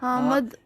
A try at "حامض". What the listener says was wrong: ہے الف میم ضاد. ضاد جو ہے نا وہ پاکستانی صحیح طرح نہیں بول سکتے.